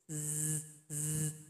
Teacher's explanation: Dia punya sifat sofir seperti bersiul. Z, z. Nah, jadi ada suara seperti itu.